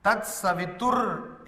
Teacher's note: because that Visarga becomes again Ir, or what is called Refala